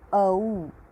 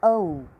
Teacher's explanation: The pronunciation of o and au is done by using kantha, that is the voice box, and oshtha, that is the lips. To pronounce open the mouth and utter a and immediately close the mouth.